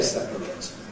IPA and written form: ˈsepərət (separate)